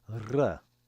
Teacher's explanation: the Sephardic Jews will pronounce it rolled, like r. In my readings, I pronounce it like the modern Israeli pronunciation, r.